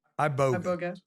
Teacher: So the emphasis on the second syllable.